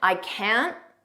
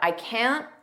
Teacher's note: we don't push out that T